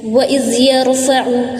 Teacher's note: عین کی ادائیگی پراپر بیچ والے حلق سے کرنا ہے